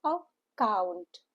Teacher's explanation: Stress is on the second syllable, the last syllable, so it is account.